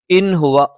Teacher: സുക്കൂനുള്ള നൂനിന് ശേഷം ഹ വന്നു, വ്യക്തമായി ഉച്ചരിക്കണം, ഇൽഹാർ എന്നാണ് പറയുന്നത്.